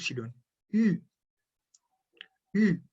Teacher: Tiene es como una transición de la I a la U. Entonces, si ustedes ponen los labios como si fuesen a decir la U, pero dicen una I, tienen el sonido de la Y.